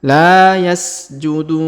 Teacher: Huruf du kita panjangkan 2, 4 atau 6 harokat ya, karena di depannya terdapat waw sukun sebelum huruf pemberhentian, dan huruf pemberhentian di sini huruf na kita sukunkan ya.